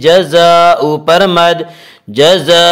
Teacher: الف مدہ ہوا، اس الف مدہ کو ایک الف کے برابر کھینچ کر پڑھیں گے